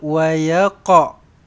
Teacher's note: Sepatutnya qaf ni kena lantun qalqalah sughraqa.